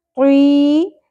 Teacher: طی یا ساکن آ گیا, حرف مدہ ایک الف کے برابر کھینچنا ہے